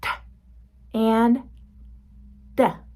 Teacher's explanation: You can see that my tongue touches the roof of my mouth right behind my teeth. They are still stop sounds.